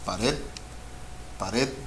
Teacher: Red is the stress syllable. Pared. It's aguda.